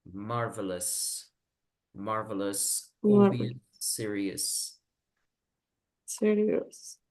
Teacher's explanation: estas palabras vamos a pronunciar la OUS que hay al final, vamos a pronunciar como una E. Es decir, vamos a decir no serious, sino serious.